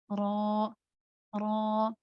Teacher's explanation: Karena penyebutan huruf ro yang awalnya tadi nempel ke atas langit-langit atas, ujung lidah yang nempel ke langit-langit atas, kemudian keluarnya itu tidak lagi tertempel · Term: inkhiraf